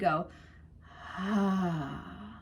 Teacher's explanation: So what you're doing in an aspirate onset is you're starting the air first, and then your vocal folds try to close around that air. There's pressure and force, so it's difficult. · So you hear a lot of air first.